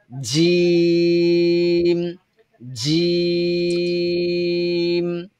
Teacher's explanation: জিম বলার সময় শক্ত হবে আওয়াজ, এবং জিহ্বার আগা নিচের দিকে থাকবে, জিহ্বার গোড়া তো নরমালি নিচেই থাকবে। এই মধ্যখানটা আমাদের প্রেসারের ফলে উপরের দিকে চলে যাবে। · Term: জিমের মাখরাজটা